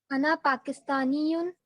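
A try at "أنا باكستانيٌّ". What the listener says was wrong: नहीं, पा नहीं आता है अरबी में, बा आता है, पा से पतंग नहीं आता।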